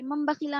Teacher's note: नूने साकिन के बाद बा आया है, इसीलिए यहाँ पर नून की आवाज को मीम से बदल कर पढ़ेंगे, इसको इक़लाब कहते हैं